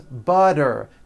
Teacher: The T turns into a D and the whole word is voiced.